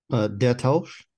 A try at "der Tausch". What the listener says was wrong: Der Tausch, sehr gut.